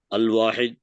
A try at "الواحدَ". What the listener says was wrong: الواحدہ ہے نا، ایک زبر ہو جائے گا نا.